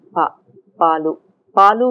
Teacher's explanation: Next level, you have voiceless unaspirated plosives. We also say pa without aspiration.